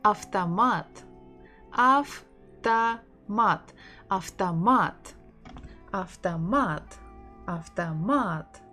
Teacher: O is not stressed, that's why we say it as A.